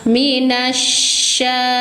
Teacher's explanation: alif lamnya dianggap tidak ada langsung masukkan suara nun ke syin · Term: alif lam syamsiyah